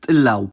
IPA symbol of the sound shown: w